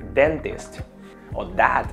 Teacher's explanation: un poquito para adentro y son las dental que es cuando la lengua toca la parte de atrás de los dientes de las paletas los dientes de arriba